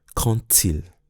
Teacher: when quand is followed by a word that starts with a vowel, then the D is pronounced T